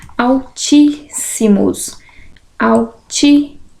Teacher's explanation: altíssimos altíssimos antepenúltima sílaba tônica também proparoxítona